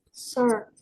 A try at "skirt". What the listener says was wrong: Skirt. Skirt, ya. By the way, kalau rok itu kan ada dua konsonan yang bersandingan kan, S sama keh ya. Nah, tapi dia itu nggak silent konsonan, jadi tetap dibaca. Jadi tetap skirt, bukan curd, gitu.